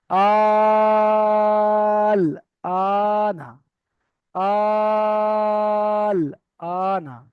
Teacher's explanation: আহ, হুরুফে মাদ্দার পরে আলিফ মাদ্দার সমতুল্য যেহেতু হচ্ছে, হুরুফে মাদ্দার পরে সাকিন এসেছে, তাই এটা মাদ্দে লাজিম হবে। এখানে 3 থেকে 5 আলিফ টান দিয়ে পড়তে হবে। লামের উপরে সাকিন আছে, সাকিনওয়ালা অক্ষরটা ডান দিকের অক্ষরের সাথে মিলিয়ে পড়তে হবে।